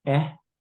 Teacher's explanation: If you were to learn how to spell it, this would be K glottal, E high tone. So K'é is how you say it.